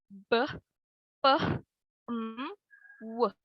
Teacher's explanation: Contohnya yang pertama itu ada bilabial. Sounds performed by using both upper and lower lips